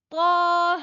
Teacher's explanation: اس کو ہم صرف طا کو ہی لمبا کریں گے، ہا کو نہیں کریں گے، تھوڑا سا ہی کریں گے